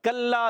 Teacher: کاف کا مخرج زبان کی جڑ اور تالو کا سخت حصہ، یہ کاف کا مخرج ہے. · لام مشدد ذرا رک کر ادا کریں گے. لام الف زبر لا بھی ہے، الف مدہ ایک الف کھینچنا بھی ہے.